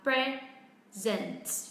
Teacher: nếu như nó đang ở dạng là verb thì trọng âm lại rơi âm tiết thứ hai